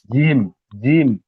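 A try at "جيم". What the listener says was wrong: জিম, তিন আলিফ পরিমাণ টান আছে, টান দিয়ে পড়েন।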